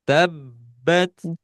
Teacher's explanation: Jadi ketika mau memantul, si ba-nya sedikit ada kayak jeda, tetapi bukan jeda ya. Tapi itu adalah melafalkan sifat dari huruf ba yang ada double. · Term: tasydid